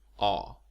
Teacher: is similar to the sound in English father and palm but the Swedish sound is actually somewhat rounded with slight protruding lip rounding